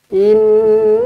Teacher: Inna, nun sabdu wajibul gunnah. Pastikan cukup dengungnya 2 harakat.